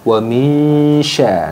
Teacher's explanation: Jadi nun sukunnya itu disamarkan ke makhrajnya sin. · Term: ikhfa